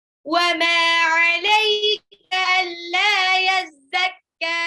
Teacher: mimnya 2 harokat, alla lamnya 2 harokat juga, yazakka belakang panjangin